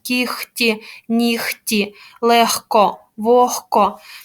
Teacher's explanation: г у нас оглушується перед глухими приголосними звуками